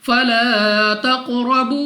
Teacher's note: را پر زبر را کو پوری یعنی موٹا پڑھیں گے ، واو ساکن سے پہلے پیش واو مدہ 2 سیکنڈ تک